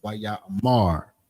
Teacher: putting that more emphasis on that last syllable, which is the mar. Not necessarily ra, because the ma and the ra are connected. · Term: stress on that final syllable